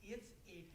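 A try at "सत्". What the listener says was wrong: No, again, S-A-T. No, you're saying yes. Stop saying yes. It's S-A-T. There's no E in there. There's S-A-T.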